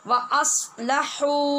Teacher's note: हा की आवाज़ वो मद्दा की वजह से लंबी है